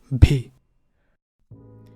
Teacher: This is with aspiration and with voicing